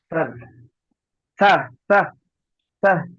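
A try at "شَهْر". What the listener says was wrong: শিনটি উচ্চারণ হচ্ছে না, শিনটি বেশি বেশি করে মশ করবেন। হামজা শিন জাবার আশ, হামজা শিন জের ইস, হামজা শিন পের উস, আশ, ইস, উস, শিন, শিন, শিন। এইভাবে মাস করবেন।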